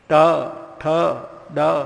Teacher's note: મોઢાના મધ્ય ભાગને જીભ અડકે તો જ બોલાય